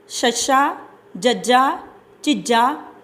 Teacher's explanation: ਇਹਨਾਂ ਦੇ ਉਚਾਰਨ ਸਮੇਂ ਜੀਭ ਕਠੋਰ ਤਾਲੂ ਨੂੰ ਛੂੰਹਦੀ ਹੈ ਅਤੇ ਇਹਨਾਂ ਨੂੰ ਅਸੀਂ ਤਾਲਵੀ ਵਿਅੰਜਨ ਧੁਨੀਆਂ ਕਹਿੰਦੇ ਹਾਂ।